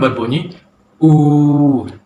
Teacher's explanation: Bunyi yang dihasilkan ialah vokal belakang sempit, iaitu daripada huruf vokal U yang berbunyi U.